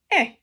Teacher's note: sound is like when you're telling someone they are wrong eh your mouth is more closed and it's also a short sound